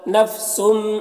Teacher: تنوین کے بعد با ہے تو تنوین کو میم سے بدل کر غنہ اخفا کے ساتھ پڑھیں گے، اس کو انقلاب کہتے ہیں۔